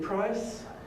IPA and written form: praɪs (price)